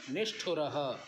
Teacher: अब यहाँ पर ना तो दंत्य हुआ और ना ही तालव्य हुआ, मूर्धन्य हो रहा है।